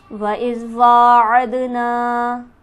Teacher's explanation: دال پر ہمارے پاس حرف قلقلہ موجود ہے، لہٰذا یہاں پر آواز اچھلتی ہوئی معلوم ہوگی · وا پر ہمارے پاس کھڑی حرکت موجود ہے، اسے ہم کھینچیں گے 1 الف کے برابر